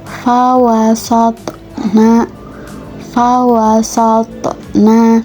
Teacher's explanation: Selanjutnya masuk kepada contoh huruf th yang mana pada ayat fawasna bihi jamaa fahatna faatna di mana huruf th tersebut berharakat sukun dan berada di tengah ayat maka huruf th tersebut termasuk hukum bacaan qalqalah dan dibaca dengan pantulan